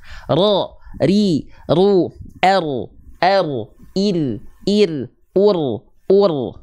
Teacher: tapi bukan dengan getaran yang ber berlebihan ya warro wabitakririn juil dia bergetar tapi sedikit walaupun sedikit tetap tegas lugas dan jelas · ro itu dia punya sifat takrir yang artinya dia bergetar tapi bukan dengan getaran yang ber berlebihan ya warro wabitakririn juil